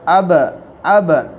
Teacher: جب ان پر جزم ہو تو ان کو پڑھتے وقت ان کے مخرج ٹکر کھا کر الگ ہو جاتے ہیں۔ جیسے با ادا ہوتا ہے دونوں ہونٹوں کے طری سے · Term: حروف قلقلہ